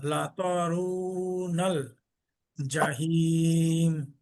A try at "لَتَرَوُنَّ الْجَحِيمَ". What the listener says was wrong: জি ওনাটা আরেকটু বেশি ওয়াজিব গুন্না। হাতে আরেকটু চাপ হলে আরেকটু সুন্দর হবে।